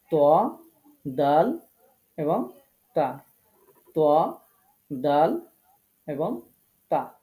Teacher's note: তারপরে 11 নম্বর মাখরাজ, জিহ্বার আগা সামনের উপরের দুই দাঁতের গোড়ার সাথে লাগিয়ে। জিহ্বার আগাটা সামনের উপরের দুই দাঁতের গোড়ার সাথে লাগিয়ে উচ্চারিত হবে